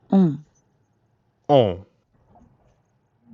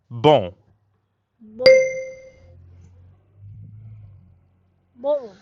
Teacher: In fact, the N isn't really pronounced at all. Instead, practice saying O like the letter O in English, but purse your lips. Almost like you're blowing a kiss, and send air through your mouth and your nose at the same time. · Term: nasal sounds